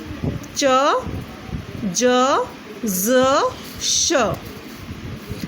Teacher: Palato-alveolar, articulated by the blade of the tongue against the teeth ridge with the front of the tongue raised towards hard palate